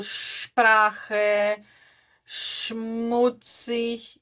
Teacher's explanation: Isso é porque ele está antes de uma consoante, tá? Então, quando o S está na frente de uma consoante, ele vai ter o som do X